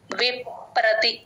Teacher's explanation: విప్ అని చెప్పేసి లోపలికి లిప్స్ క్లోజ్ చేసి విప్ ప్రతి అంటే కరెక్ట్ గా స్ట్రెస్ పడిపోతుంది విప్రతి పని న కింద న వత్తు ఉందండి గమనించండి శృతి విప్రతిపన్నాతే శృతి